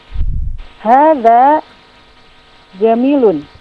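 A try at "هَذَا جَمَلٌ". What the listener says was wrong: Jamalun, sahih. Nah, kalau Jamilun dia ada ya setelah mimnya. ini tidak ada ya.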